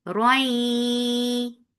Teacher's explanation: keep the sound in your nose for a longer time and make ra heavy when you are pronouncing it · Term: idgham with gunna